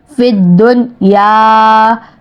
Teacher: فا کو دال کے ساتھ جما کر رکھنا ہے، دال کو نون کے ساتھ بالکل نہیں جما کر رکھنا لیکن ملانا ضرور ہے کیونکہ جزم ہے، چھوٹی سی دال کو جزم کہتے ہیں۔